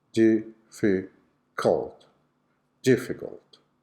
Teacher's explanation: The schwa sound is on the last syllable, on the syllabic O sound.